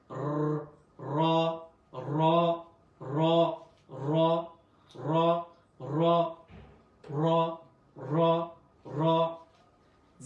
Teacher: র একটু মোটা ভাবে উচ্চারণ হবে এবং ঠোঁটের মধ্যে একটু কম্পন সৃষ্টি হবে।